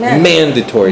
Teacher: I put the stress on man.